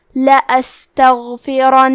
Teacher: تو ہم 2 حرف کے برابر نون کو پڑھیں گے